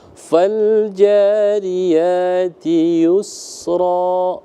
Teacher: biarkan mengalir ketika sin itu sukun